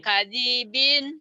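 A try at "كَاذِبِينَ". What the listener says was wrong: gak ada yang panjang. Ita, Australia, panjangnya, gitu. Kadibin, Kadibin.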